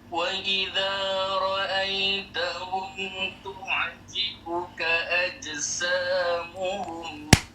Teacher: Itu jim tu betul-betul daripada hujung lidah. Kita nak daripada tengah lidah.